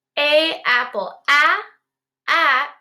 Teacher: a a is the short a a it's very short you can't really hold it out